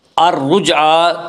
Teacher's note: الرجعی کی را کو بھی پر پڑھیں گے